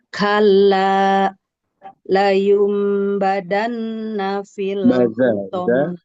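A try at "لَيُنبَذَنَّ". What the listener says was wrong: Layumbaza Zal. Jangan jadi dal.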